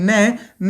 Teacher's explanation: न जो है दंत से बोला जाता है, तो इसका उच्चारण स्थान दंत भी है और नासिका भी है।